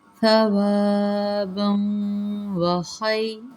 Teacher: واو کے اندر ادغام کریں گے، ادغام مغنہ ہوگا